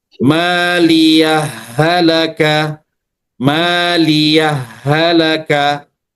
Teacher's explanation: Nah, kalau dia misalnya ee dibaca idgham, berarti dia memasukkan ya huruf ha pertama kepada huruf ha yang kedua tanpa berhenti